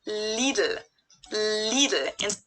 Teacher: both of the L sounds are light L's that you pronounce with the top of your tongue